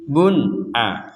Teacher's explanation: Jadi tidak ada dengung, enggak ada samar.